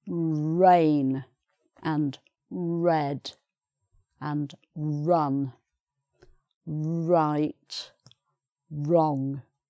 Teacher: in English, British English, it's right at the front of the mouth and you push your lips forward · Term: R sound